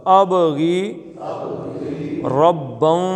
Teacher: اب کے با کیا ہے؟ کلکلہ ہے